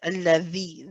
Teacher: the tip of the tongue is actually touching the bottom of the upper 2 incisors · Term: dhal